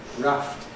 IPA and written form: ræft (raft)